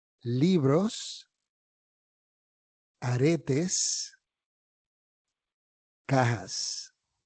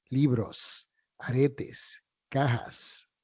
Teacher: en español la S final de las palabras se pronuncia de la misma forma, como un sonido de silbido, como si estuvieras pitándole a alguien. Psst, libros, aretes, cajas.